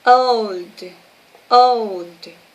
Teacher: en el caso de old, la O se pronuncia como una O terminando en una U. Es una O muy suelta.